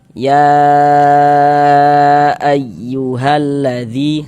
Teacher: Ini dengan mad thai bertemu dengan huruf hamzah tapi di lain kata di dalam dua kata yang berbeda atau di lain kalimat maka dia berubah menjadi mad jaiz munfasil. Panjangnya mad jaiz itu dibaca dengan panjang 4 sampai dengan 5 harakat. Namun ada juga yang membolehkan dibaca dengan panjang dua harakat.